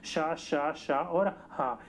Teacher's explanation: पर वहीं पर ही महाप्राण में जो होता है, उच्चारण करते समय श्वसन की मात्रा जो होती है वो अधिक निकलती है